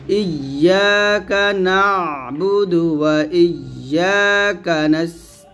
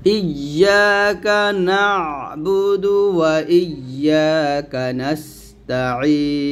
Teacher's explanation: অবশ্যই ইয়ার উচ্চারণ সঠিকভাবে আনতে হবে, আর আইন উচ্চারণটা গলার মাঝখান দিয়ে চাপ দিয়ে নিয়ে আসতে হবে